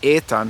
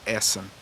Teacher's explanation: see in old saxon we have etan for example but an old high german that medial t is going to shift to that double z